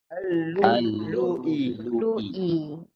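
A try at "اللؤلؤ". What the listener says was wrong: Lu-i. Dia bukan nak bunyi wow. Tak ada bunyi wow, bunyi Hamzah. Ni agak berhati-hati eh kalau jumpa macam ni. Nampak huruf waw tu yang ditukar kepada Hamzah. Yang bunyinya Hamzah.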